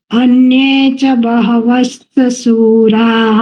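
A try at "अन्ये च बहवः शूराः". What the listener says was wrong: બહવશ્ચ નથી, બહવઃ પછી શૂરાહા એટલે એ વિસર્ગનો અડધો શ ઉચ્ચાર થાય એટલે બહવ શૂરાહા.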